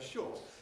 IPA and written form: ʃɔːt (short)